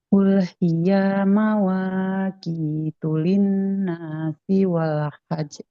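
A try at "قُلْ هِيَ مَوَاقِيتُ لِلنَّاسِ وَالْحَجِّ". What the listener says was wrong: Oke, di sini di kulhiyah. Nah, ya-nya fathah. Di depannya nggak ada alif. Maka nggak boleh dibaca. Nggak boleh dibaca panjang ya. Qul hiya mawaqitu linnasi wal hajj. Nah, karena di atas jimnya ada tasydid, jadi harus ditekan dulu. Wal hajj. Wal hajj.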